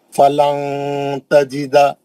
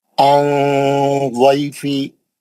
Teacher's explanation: जबान की नोक नून के मखरज को लगने नहीं देना, उसको पकड़ के नीचे रखना, आवाज को नाक में लेके जाना, अच्छा गुन्ना करना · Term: इख्फा